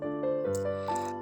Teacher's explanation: the N is not really an N but rather the sound NG